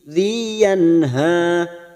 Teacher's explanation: nun sukun bertemu ha, idhar halqi dibaca jelas tanpa mendengung. Yanha, ha 2 harokat kita panjangkan.